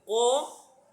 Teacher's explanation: Itu kan ko itu pangkal lidah naik.